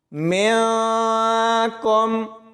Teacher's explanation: یہاں دیکھیں، میم کو نون ساکن کے ساتھ ملائیں گے تو آگے کاف ہے، تو یہاں پر اخفا ہوگا، یعنی ہم نے نون کی آواز کو چھپا کر پڑھنا ہے